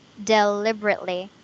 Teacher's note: there are like five syllables, deliberately. Yeah, there's five. But the stress is on the first one, deliberately. So basically, you just squish them together.